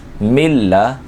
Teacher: جب لام آ گیا تو قاعدہ یہاں پر بھی ادغام بلا غننے کا لگے گا یعنی ادغام تو ہوگا لیکن غنہ نہیں ہوگا کیونکہ یہ انہی حروف میں سے جس میں غنہ نہیں ہوتا. میم نون لام پڑھیں گے تینوں کو جب رواں کریں گے تو نون کی آواز جو ہے وہ نہیں آئے گی